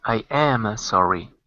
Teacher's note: you got to put the stress on the am